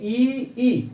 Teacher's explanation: ई के उच्चारण के समय जो है जो हमारी जिह्वा है वह तालु की तरफ उठती है थोड़ा सा, और तालु की तरफ उठने के कारण जो है कि जो हमारी प्राणवायु है उसका मार्ग थोड़ा सा संकीर्ण होता है। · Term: तालव्य स्वर